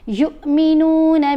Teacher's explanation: یا کو حمزہ سے ملائیں گے نا تو چھوٹی آواز بنے گی، جھٹکا دے کر پڑھا جائے گا